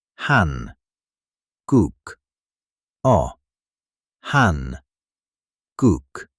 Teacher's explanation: It's evenly timed. So instead of emphasizing one part, you give equal weight to each syllable.